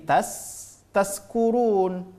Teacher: huruf Sin tempat keluar hurufnya adalah ujung ujung lidah